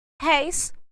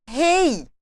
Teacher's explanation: Réis é aberto, rei não. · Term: ditongo aberto